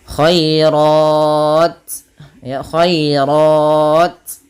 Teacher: Kemudian alkhairat khoai ya lembutkan dan di sini tipis khairat. Nah, rnya baru dibaca dengan tebal karena dia tafhim berharakat fathah